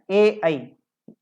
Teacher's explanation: कंठ तालव्य। इन दोनों स्वरों का उच्चारण स्थान कंठ और तालु दोनों से होता है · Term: कंठ तालव्य स्वर